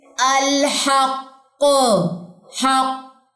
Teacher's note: قلقلہ کبریٰ آپ کر رہے ہیں، اس پہ ایکسٹریم لیول کا آپ اس پہ قلقلہ کر رہے ہیں، تو یہاں پہ آواز کا اتار چڑھاؤ اس کی ضرورت ہی محسوس نہیں ہوگی کیونکہ آپ نے یہاں پہ اسٹرانگیسٹ قلقلہ کرنا ہے۔